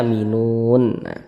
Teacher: kita berhenti di huruf yang tidak dibaca panjang ini huruf nun kita berhenti di huruf nun tidak dibaca panjang huruf nun kita matikan kita sukunkan hurufnya